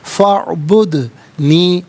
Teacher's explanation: دال ساکن ہے لیکن حرف قلقلہ ہے تو آواز لوٹتی بھی محسوس ہونی چاہیے